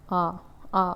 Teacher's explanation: जिन स्वरों के उच्चारण में हमारा माउथ पूरा खुलता है उसे हम लोग क्या बोलते हैं विवृत स्वर वर्ण कहेंगे जैसे कि आ आ बोल कर के देखिए पूरा मुंह खुलेगा